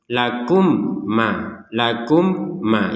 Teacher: mim sukunnya sudah tidak dibaca dengan jelas karena sudah masuk ke mim yang kedua kum maka yang ini jangan dibaca jelas misalkan lakum Ma lakum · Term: dengung 100%